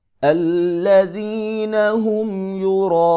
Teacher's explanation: الف کے اوپر بڑی مد ہے لہذا 3 الف کے برابر اس کو لمبا کریں گے، الذین هم یراءون، حمزہ پیشوا او، یہاں پر مدہ ہوگا، حروف مدہ 3 ہیں، الف، واو اور یا۔